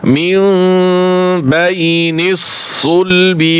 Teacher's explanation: এইখানে ইকলাব, এই বা হরফ মিম ধারা পরিবর্তন করতে হবে। এই যে ছোট্ট একটি মিম রয়েছে, এই মিমকে ধরবে।